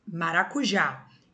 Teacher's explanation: maracujá, o já é a mais forte. Então, como ela é a tônica e ela é terminada em A e As, ela recebe o acento, tá?